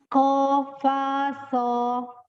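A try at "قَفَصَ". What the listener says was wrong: Soalnya ujung lidahnya tidak keluar. Antara gigi seri atas dan bawah. Kofaso. Nah, lidahnya tidak ke atas ya, jangan so gitu, keluar tidak so, di dalam saja terhampar ujung lidahnya antara gigi seri atas dan bawah ya untuk so. Sama dengan sa.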